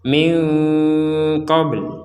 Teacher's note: kalau kita berhenti min qabl, maka baknya ini wajib kita pantulkan sebagaimana qaf